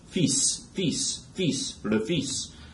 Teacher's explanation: The L is silent, but the S is pronounced